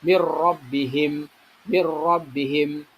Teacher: Sedangkan idgham bila gunah, nah, di sini ada contoh yaitu mirrabbihim. Nah, nun sukun ketemu dengan ro, ya, nun sukun ketemu dengan ro. Nah, jadi harus dibaca tanpa dengung, ya, langsung masuk di sini cepat mirrabbihim, mir rabbihim.